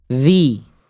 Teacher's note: Ujung lidah disentuhkan ke ujung gigi atas.